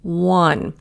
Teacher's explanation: a lot of people don't realize it's a W sound even though it's an O. 1. It's pronounced the same way as like I won a prize.